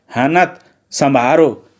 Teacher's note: परनिष्ठित हिंदी में ना, मा, रा के महाप्राण रूप नहीं है। ब्रज भाषा में ये महाप्राण भी है